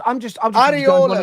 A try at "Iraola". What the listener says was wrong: Iraola. It starts with an I. I in the Basque is E.